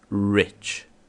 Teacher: O R, em inglês, é o que nós chamamos de R retroflexo, ou seja, é sempre um R enrolado, você enrola a língua para pronunciá-lo. Rich, e não rich.